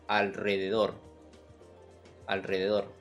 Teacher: estoy usando el sonido de la R vibrante o R doble